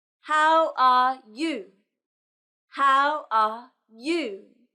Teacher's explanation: It goes down at the end, like this. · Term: intonation